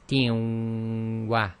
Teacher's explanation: the Noon Saakin in the tanween has been dropped, and the kasra on the ta is being merged into the waw